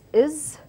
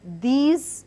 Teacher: Is and was has S in it, or rather S letter in it, but we do not enunciate with the S sound, but rather we enunciate with the Z sound